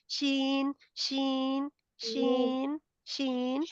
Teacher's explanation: शीन नहीं इसमें शीन में सीटी नहीं है · जुबान का दरमियानी हिस्सा ऊपर तालू की तरफ बढ़ता है,